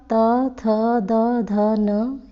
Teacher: ये आपके दंतव्य हैं क्योंकि इनका उच्चारण स्थान दांत है।